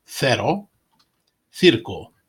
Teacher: In Spain, the C before E and I is pronounced as a TH.